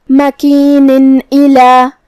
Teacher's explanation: ہم یہاں تنوین ظاہر کریں گے اور اسے نون ساکن پڑھیں گے اور بغیر غنہ سے حکم کو ادا کریں گے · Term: اظہار